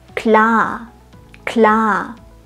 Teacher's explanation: Um ein schönes, langes A auszusprechen, solltest du den Mund weit aufmachen. Und zwar weiter als in deiner Muttersprache.